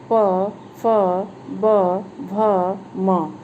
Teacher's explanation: पांचवा है प वर्ग, प, फ, ब, भ, म, इसका उच्चारण स्थान होष्ठ माना गया है। दोनों होठों की सहायता से इसकी ध्वनि निकलती है, इसलिए इसका उच्चारण स्थान होष्ठ कहा गया है।